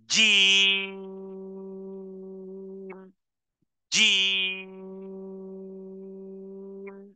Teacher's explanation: জিম, জিহ্বার মধ্যখান তার বরাবর উপরের তালুর সাথে লাগিয়ে উচ্চারণে আওয়াজকে কঠিন করে ধাক্কা দিয়ে 6 হারাকা পরিমাণ টানবেন এভাবে।